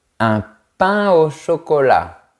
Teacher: On ne fait pas la liaison entre les mots pain et eau.